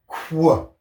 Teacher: It's kind of made up of two sounds. It's got the K and the W. We're going to put those two hand signals together to make Qu.